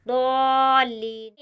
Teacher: दौलीन में यहाँ द्वाद के साथ अलिफ भी मोटा पढ़ा जाएगा। यहाँ द्वाद के साथ अलिफ है तो अलिफ भी यहाँ पुर पढ़ा जाएगा।